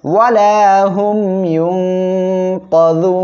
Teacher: সম্মানিত দর্শক শ্রোতা, আমরা এখানে ওয়াকফ করলে নুন অক্ষরটি সাকিন হবে, আর এক আলিফ মদ পেশের বামে জজমালা ওয়াও, এক আলিফ মদ এর পরের অক্ষরে ওয়াকফের কারণে সাকিন হওয়ায় এখানে মদ দার্জি হবে, 3 আলিফ টেনে পড়বেন